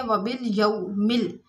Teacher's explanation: واو ساکن اور اس سے پہلے زبر ہے تو واو لین ہے یہاں پر، یعنی نرمی اور جلدی سے پڑھیں گے